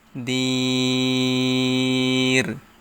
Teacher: মদের হরফের বামের হরফে অক্ফ হয়েছে, তাই ইহাকে মদ্দে আরজি বলা হয়। এখানে 3 আলিফ টেনে পড়তে হবে।